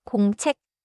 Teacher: The ending 책 has a clear final 기역 sound, but do not add an extra vowel after it.